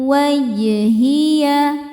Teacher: Inni wajjahtu wajhiya jim ini adalah qalqalah sughra karena qalqalahnya atau sukunnya sukun asli ya di jim dan berada di tengah-tengah kata. Maka jim ini dipantulkan dengan pantulan yang kecil